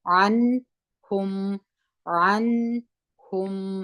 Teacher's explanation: دغه میم هم اظهار دی، مخرج یې ټینګوو، غونې ته نه بیا وایي.